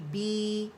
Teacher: بی کے لیے آواز نیچے جائے گی